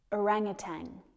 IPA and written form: əˈræŋ uːˌtæn (orangutan)